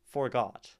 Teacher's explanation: we land on got and we have a unstressed syllable going into it